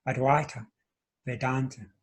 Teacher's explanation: The Va there is pronounced Wa, and the AI vowel in Sanskrit is pronounced I.